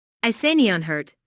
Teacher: This is a yes/ no question. So, the intonation rises at the end. Notice how this question is asked in a worried way.